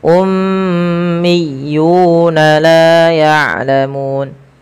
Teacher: Pada lafal miyuna ditekan huruf ya berharakat tasydidnya.